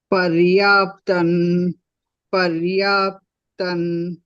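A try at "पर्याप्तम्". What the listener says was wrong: Now, when you say alone, you should say paryaptam. When you say together, you should say paryatan pitamedesam. So when I say it, only that pada, I'll say paryaptam. Doesn't matter, but I thought I should explain to you because slides show tham, then we say tan pitamedesam.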